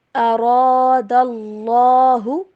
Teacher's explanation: را کو موٹا پڑھنا ہے اور یہاں پہ اللہ کا نام بھی موٹا کر کے پڑھیں گے